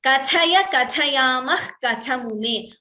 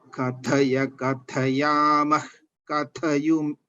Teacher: That tha, if it is heard better as a Mahaprana, it would be good.